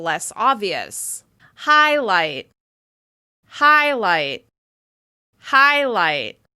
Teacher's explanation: Can you see how my mouth is moving more on the first syllable and it's relaxing a little bit on the second syllable?